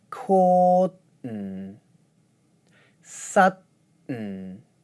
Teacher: For the d words, I move the d consonant from the beginning of the second syllable to the end of the first syllable, and then make an n sound for the second syllable.